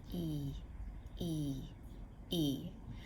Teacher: doing when you say ooh my tongue is pushing forward then when i make that e sound my tongue is pulling back